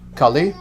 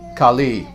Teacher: With the term Kali, as in Kali Yuga, short A, short I. With the goddess, on the other hand, long A, long I.